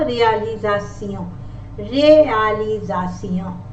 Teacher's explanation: S. And if the letter S is in the middle of vowels, it sounds like Z